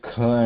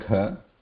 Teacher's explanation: kha and gha both require more breath, same position, but again kha is muted, gha has vibration.